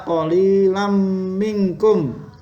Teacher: Ada fathah tanwin bertemu dengan mim, dibaca idgham bi gunnah